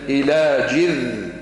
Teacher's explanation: فحملته فانتبذت به مكانا قصيا، فأجاءها المخاض إلى جذع، مش جذع، الذال لا قلقلة في الذال، إلى جذع، سكن الحرف، جذع النخلة.